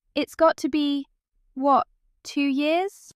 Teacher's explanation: Estuary glottal stops, where the T in the middle of words disappears